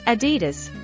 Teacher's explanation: It's Adidas, with stress on the first syllable.